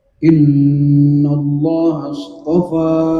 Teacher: maka lafzul jalalah mesti dibaca dengan tafkhim atau taghlil, tebal. Kenapa? Karena sebelumnya adalah harokat fathah nun.